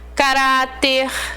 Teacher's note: Palavras terminadas em R, L, N, X, P, S, eu vou acentuar e elas serão classificadas como paroxítonas, tá? Palavra onde a penúltima sílaba é tônica. Ela é mais forte.